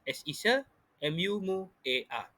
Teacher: vokal berganding UA mengandungi satu proses labialisasi, di mana ada peluncuran bunyi W pada tengah-tengah huruf vokal U dan A